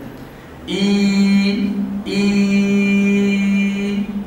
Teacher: في الياء انخفاض للفك السفلي وارتفاع لوسط اللسان